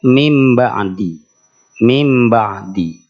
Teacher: atas khalqom mim ba'di tadi membacanya mim ba'di mim ba'di nah menghilangkan suara nunnya sudah betul nunnya diganti dengan mim Tapi tinggal ditahan dua harakat didengungkan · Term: iqlab